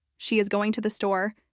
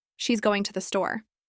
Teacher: The stress naturally falls on going and store because those are the content words.